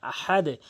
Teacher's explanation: আহাদে বলবেন এবং হাটি অবশ্যই হলকের মাঝখান থেকে